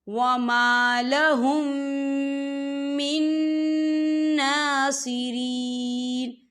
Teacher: یہ دیکھیں من، یہاں نون ساکن ہے، نون ساکن کے بعد جو ہے نون آ رہا ہے اور نون جو ہے حروف یرملون میں سے ہے، تو یہاں پر ادغام ہوگا، تو ہم اسے غنے کے ساتھ پڑھیں گے۔